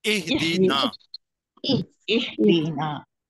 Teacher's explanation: ای کی آواز آنی چاہیے زیر کی، جی. اے نہیں آئے گی